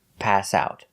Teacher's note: we need to stress both the verb pass and the preposition out. Stress both words.